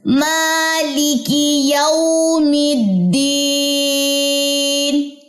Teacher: میم کو لمبا کرنا ہے، کھڑا زبر اس پہ